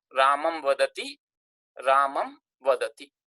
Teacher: Final makara, when followed by a consonant, is changed into anuswara.